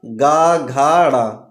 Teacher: घोष अथवा सघोष, स्वर तंत्रियों में कंपन होगा